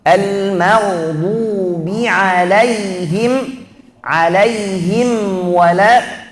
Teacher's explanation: Ini namanya izhar syafawi. Kita harus baca huruf mim itu dengan cara yang jelas, izhar.